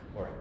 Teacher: So we have also R, as well as it is rolled. So I hope you guys have the ability to like roll your R's a little bit, or maybe this is an opportunity to practice that as well.